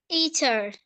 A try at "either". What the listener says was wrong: Jadi saat pengucapan either, itu jangan terlalu kentara saat pengucapan T, oke? Jadi yang T-nya itu dia soft, oke? I can still hear the T, so it's gonna be like this. No T, okay?